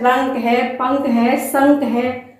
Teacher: अनुस्वार। इनका उच्चारण करते समय वायु केवल नाक से निकलती है।